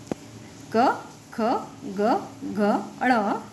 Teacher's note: इनके उच्चारण करते समय जिह्वा यानी टंग मुख के किसी भाग को स्पर्श करती है तथा हवा कुछ क्षण के लिए रुककर झटके से बाहर निकलती है। उन्हें स्पर्श व्यंजन कहा जाता है।